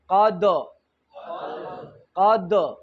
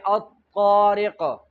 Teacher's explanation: او د طا ادا وکړئ: الطارق. بیا فرق په صفاتو دی، طا غټه ده، دال کې جهر دی، او تی کې همس دی او باریک هم ده